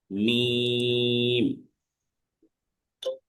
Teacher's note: দুই ঠোঁটের ভিজা অংশ থেকে উচ্চারণ হবে।